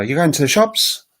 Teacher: if I was in Australia, I'd probably go, you're going to the shops? And I'd go really high.